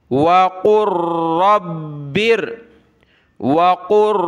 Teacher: قاف کو ملائیں گے را کے ساتھ، لام کو نہیں پڑھنا، قاف کو ملایا را کے ساتھ، را کو با کے ساتھ، با کو اس را کے ساتھ.